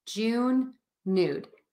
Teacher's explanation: the vowel with that n in June may sound different to you than the vowel in nude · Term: ooh vowel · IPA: /u/